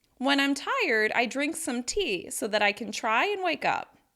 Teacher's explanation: I'm stressing the particle on the phrasal verb, but you notice that even in a long sentence like this, being sure to distinguish the words that are stressed from the words that are reduced or unstressed really helps increase the impact of my sentence.